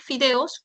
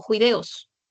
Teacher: La alternancia consonántica entre la fricativa labiodental sorda con la fricativa velar sorda, o sea, la F y el sonido de la J